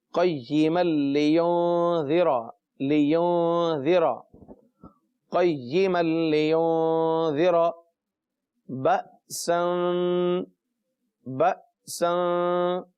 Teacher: میم کا لام میں ادغام ہو رہا ہے، لہٰذا تنوین اور نون کی آواز چلی گئی اور لام میں مل گئی